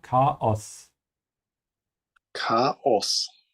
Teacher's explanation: make sure to add the small pause here between the A and O. Chaos.